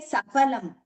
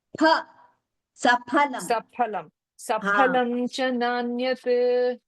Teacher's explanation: No pha bhagini. There is no F sound.